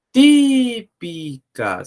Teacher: É a antepenúltima sílaba tônica. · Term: proparoxítona